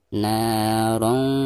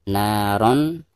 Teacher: Jadi suara tanwinnya itu harus didengungkan dan disamarkan ya. Jadi tidak boleh dijelaskan, tidak boleh dibaca naron ya, tetapi harus narong za. · Seperti ini. Nah, maka cara membaca tanwin yang di atas ro itu harus disamarkan disertai dengan dengung